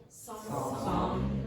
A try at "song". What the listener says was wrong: Yeah, now what she's doing is song, okay, and she's making a nasalization of the vowel. Here. But yes, song. Now before, this very often happens with Spanish speakers and Brazilians, they'll produce a nasalized vowel here.